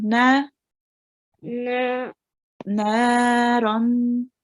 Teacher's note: we make the noon 2 counts long because there is an alif madiyah here